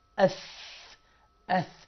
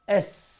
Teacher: أس. يعني أنا في الثاء لساني بيطلع سنة كده، إنما في السين ورا سناني